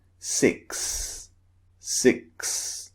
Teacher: noticed is x x now x contains the s sound because the letter x actually represents the k sound and the s sound pushed together